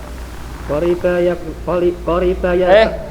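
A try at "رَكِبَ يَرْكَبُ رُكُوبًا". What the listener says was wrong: Antum baca ro dulu, dikembali. Rukubun, masdarnya adalah rukubun. Raqiba yarkabu. Raqiba yarkabu, rukub. Jangan dibalik-balik ya Mas ya.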